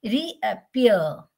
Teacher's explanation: So re is stressed, unstressed. App is unstressed, but ear is stressed.